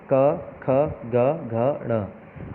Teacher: ये कंठ यानी कि जीभ को ऊपर कंठ से लगा के बोलते हैं। जीभ का जो हमारा पिछला हिस्सा है वो कंठ से लगता है। आप बोल के देखिए तो आपकी जीभ का पिछला हिस्सा गले के ऊपर टच करेगा। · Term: स्पर्श व्यंजन